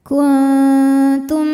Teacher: Kuntum, tum ada hukum idgham mimi, sebab mim sukun menghadapi mim hidup, maka mim dimasukkan ke mim yang hidup disertai bunyi dengung, jadi bunyi M tahan